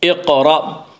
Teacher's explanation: حمزے کو جھٹکے سے پڑھیں گے